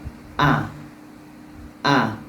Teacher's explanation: adalah inhibasin nafasi tertahannya nafasq Harfi ketika kita melafazkan huruf jadi Hamzah ini tertahan nafas kita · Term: jahar